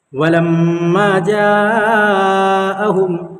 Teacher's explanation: मीम के ऊपर तशदीद है, इसलिए मीम में गुन्ना होगा